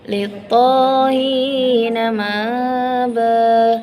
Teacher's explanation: hamzahnya itu tidak terlalu dibaca ataupun dilemahkan. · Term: hamzah yang dilemahkan